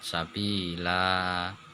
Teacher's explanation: Jadi sa'a panjang. Sabilan mad iwat karena ada tanwin di wakof. Baca fathah biasa panjang 2 harokat.